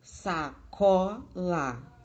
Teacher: A sílaba tônica, a sílaba mais forte é có. E as sílabas átonas dessa palavra é sa e lá, porque falamos sacola.